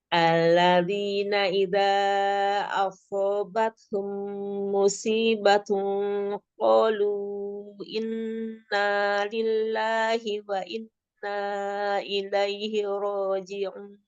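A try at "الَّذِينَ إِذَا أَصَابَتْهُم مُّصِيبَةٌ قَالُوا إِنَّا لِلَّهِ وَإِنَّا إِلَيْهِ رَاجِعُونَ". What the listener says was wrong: Oh ini nun musyadadahnya yang kedua kurang lama ditahan kan yang nun musyadadah. Musi pakai soda. matnya mat wajib musyadadah. Jadi harus agak lama ditahannya kan sempurna ya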